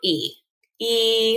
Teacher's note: our lips are not rounded when we produce the sound e e so you should kind of be smiling as you're making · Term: front vowel